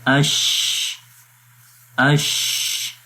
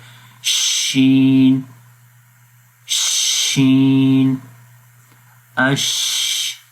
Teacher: تفشی کا مطلب ہوتا ہے آواز کا منہ کے اندر پھیلنا۔ تو جب ہم شین پڑھتے ہیں تو شین کی آواز منہ کے اندر پھیل جاتی ہے، تو یہ صرف ایک ہی حرف ہے شین کا جس کے اندر یہ صفت پائی جاتی ہے۔